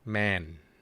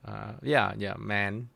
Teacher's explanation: the n sound at the end. It would not overlap with the vowel, but the m sound at the beginning overlap with the vowel, so that's why you get ma and n, get man. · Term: final consonant